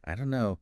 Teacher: But we often hear it as, I don't know, the don't and no just merge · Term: linking